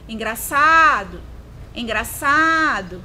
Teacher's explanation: Qual foi a sílaba mais prolongada? Foi o sa. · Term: paroxítona